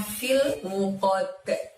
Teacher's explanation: dalnya disukun maka harus mantul cara membacanya karena terjadi qalqalah lagi, yaitu qalqalah kubro